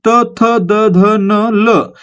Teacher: त चा उच्चार करताना काय होतं आपली जीभ आपल्या दाताना स्पर्श करते म्हणून त्यांना आपण काय म्हणतो दंत्य म्हणतो म्हणजे आपलं उत्तर काय